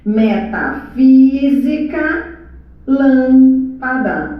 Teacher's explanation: A sílaba tônica é a antepenúltima sílaba da palavra. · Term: propoxítonas